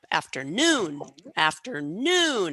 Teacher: so on that third syllable on noon so you'll notice that one is loudest it's longest it has a pitch jump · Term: primary stress